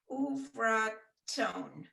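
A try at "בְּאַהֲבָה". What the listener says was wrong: Okay, but the vet there has a shava under it, so you have to give it a little sound, a short sound.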